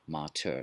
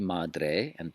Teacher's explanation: the T becomes a D, madre, but the dental is still a dental